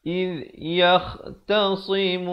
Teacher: Iz di hujung lidah.